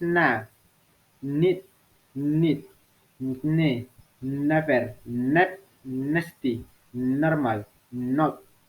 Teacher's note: Voice alveolar nasal sounds